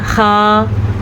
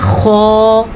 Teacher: خا، یہ ہم نے باریک پڑھا، اس کو ہم نے پڑھنا ہے خو، منہ بھر کے یا منہ کو گول کر کے پڑھیں گے تو یہ پر نکلے گا